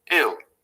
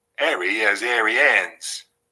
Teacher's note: never ever say so they pronounce hill and ill identically ill these speakers are known as h-droppers and it's a clear feature of most regional british accents